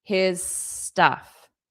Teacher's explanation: So his stuff will sound like one word.